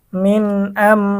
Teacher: মিম সাকিনের ইজহার গুন্না ছাড়া স্পষ্ট পড়তে হবে